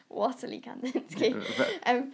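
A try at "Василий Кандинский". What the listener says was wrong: I think it's Vasily because in Eastern European languages a W is a V, so it's like Vasily Kandinsky. That's a bit of a Russian accent.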